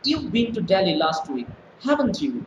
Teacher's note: when i say haven't you so my tone is going up